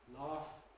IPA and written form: lɑːf (laugh)